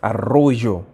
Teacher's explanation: when you hear the R sound extremely rough, it's usually in most cases that it's a double R